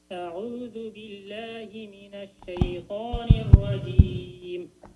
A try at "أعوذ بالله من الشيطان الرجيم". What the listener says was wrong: I think you're good, only you need to go slowly. Do not go fast. Just go slowly.